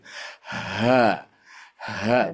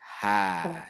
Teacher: Jadi seolah-olah huruf H-nya itu keluarnya dari dada, ya. Karena memang ketika dibaca seperti itu, dadanya seperti agak maju ke depan, dibusungkan gitu.